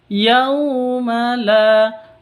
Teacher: la panjang dua ketuk karena di sini ada Alif diawali dengan fathah